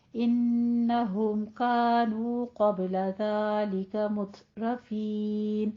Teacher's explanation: ता पे हमस करना है और रॉ को मुफख्खम कर देना है, पुर पढ़ना है